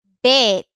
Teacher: palabra como Pet lo que pasa es que esta palabra es tiene una vocal que es muy larga más larga que en español